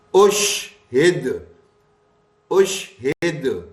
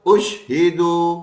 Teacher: لیکن وقف کرتے وقت پیش والی حرکت ساکن سے بدل جاتی ہے